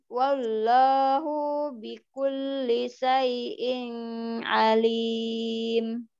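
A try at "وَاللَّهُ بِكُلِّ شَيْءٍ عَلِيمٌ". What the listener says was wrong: Bunyinya jangan panjang. Wallahu bi.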